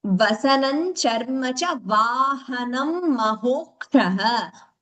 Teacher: When we are chanting in Sanskritam, Ha should be clear as Ha only. That Ga influence should be reduced.